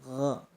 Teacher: Ghain letaknya di tenggorokan bagian atas, berjejer dengan kha ya